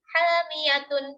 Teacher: pada tanwin Nun sukunnya terdengar tapi tidak tertulis ya kan Di sini tidak ada tulisan Nun sukunnya namun saat